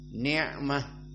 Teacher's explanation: ni'mah dia adalah makhrajnya makhraj al-halq, dan dia adalah wusta dari al-halq, di halq yang pertengahan, ni'mah. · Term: makhraj ain